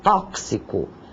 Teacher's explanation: Tóxico, uma palavra que muita gente pronuncia de forma errônea, é com X e soa como um KS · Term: som de KS